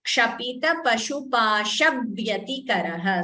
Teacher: So again, there is a dvitvam here before Vyatikaraha. The V is doubling.